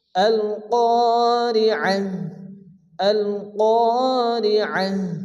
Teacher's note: এখানে আয়াতের শেষে গোলতা আসছে, তো তা হা সাকিনে পরিণত হবে। এখানে আইন হা জবর আহ আহ হবে।